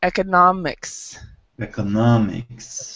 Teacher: the stress is actually in the middle